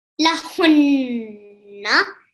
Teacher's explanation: the noon is carrying the shadda. So this is noon mushaddad. So you want to pause on it a little bit and also produce the nasal sound